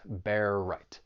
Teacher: you have that overlapping R sound, that final R in bear and the beginning R in right. Just allows you to move from one word right into the next.